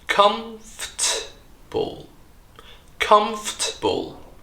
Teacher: the o r sound here is completely silent and we join the letter F and T together they form a so-called consonant cluster f f so we drop one syllable and we lay the